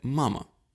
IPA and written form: ˈma.mə (мама)